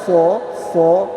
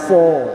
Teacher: fo itu ada desisnya, udaranya mengalir, suaranya mengalir, pangkal lidahnya naik, fo, suaranya berkumpul, desisnya ada.